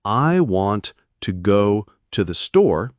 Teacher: For example, in the sentence, I want to go to the store, the stressed words are want, go, and store. The to and the 'the' are unstressed and often reduced. This creates a natural rhythm. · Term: sentence stress